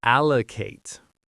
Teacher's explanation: Notice how the a at the end is a long a sound like in late.